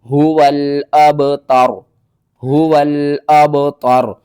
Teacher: با حروف قلقلہ میں سے ہے تو با کے اوپر آپ نے قلقلہ کرنا ہے